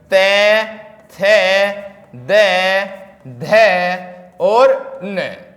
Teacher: जीभ का अग्रभाग हमारे ऊपर के दांतों को स्पर्श करता है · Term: दंतीय व्यंजन